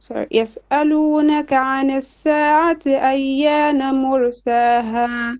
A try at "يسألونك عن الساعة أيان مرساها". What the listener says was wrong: Okay, make your ta marbuta clear. ساعتي تي. Your عين ساعتي.